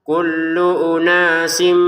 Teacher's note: tanwinnya sin atau kasrot ainnya ini bertemu dengan mim baru dimasukkan ke mim disertai dengungan